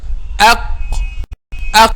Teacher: So we pronounce letter Qaf from the deepest part of the tongue